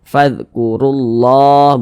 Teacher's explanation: Maka lafaz Allahnya dibaca tebal, dibaca tafkhim sehingga dibaca fadhkurullah. Jangan dibaca fadhkurullah, kurullah, jangan, tapi ditebalkan fadhkurullah begitu.